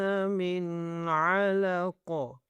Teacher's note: عین کو پراپرلی گلے کے اوپر والی سے آواز نکالنی ہے